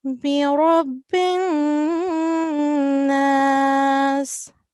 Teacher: we have to make sure that we stay in this noon for 2 seconds and conceal the sound of noon · we are going to do 2 seconds nasal sound in this noon